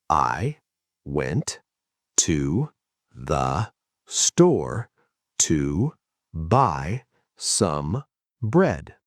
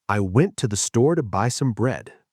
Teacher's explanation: The other words I, to the, to some, are crushed. They are super fast. They are the glue that holds the mountains together.